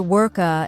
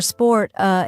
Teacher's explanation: adding extra vowel sounds at the end of words many Learners say work uh instead of work or sport uh